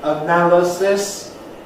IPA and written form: əˈnæləsɪs (analysis)